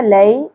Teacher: یہاں پہ یا ساکن حرف لین ہے, نرمی سے ادا ہوگا. لئی, لے سا نہیں پڑھنا, لئی.